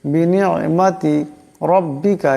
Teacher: রার উপর জবর আছে, এই রাকে অবশ্যই মোটা করিয়া পড়তে হবে